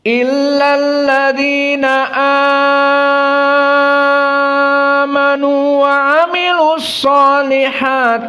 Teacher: Kita berikan talkin qiraah yang pertama jumhur hanya dua harakat mad badal di sini dan qiraah wars dengan mad badal yang dibaca al-isba